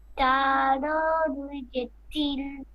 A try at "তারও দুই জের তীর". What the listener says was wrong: তারও দুই জের, আপনি বলেন কি হবে? লাম কি আছে এখানে?